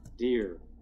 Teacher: At the voiced end, where we hear the D sound, dear, we have a pitch contour that starts pretty low and then rises up before falling down in its natural contour.